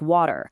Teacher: think about a T sandwiched between 2 vowels. In American English, that often becomes a voiced tap, making water sound like water, whereas RP keeps that T super crisp and voiceless.